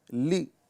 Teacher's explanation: لام کو حرکت کے ساتھ پڑھیں گے، اس کو بغیر کھینچے ادا کریں گے۔ لام زیر لی، لی، اتنا ہی اس کو پڑھنا ہے۔